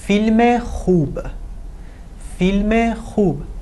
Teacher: Just you need to put the ezafeh sound here. The short sound eh.